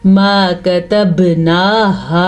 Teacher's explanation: نون کھڑی زبر نا، ہا کھڑی زبر ہا، ان دونوں کو کھینچ کے پڑھنا ہے